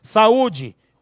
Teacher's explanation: o U aqui é forte, então ele é vogal